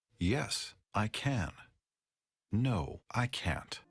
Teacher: we stress both can and can't in short answers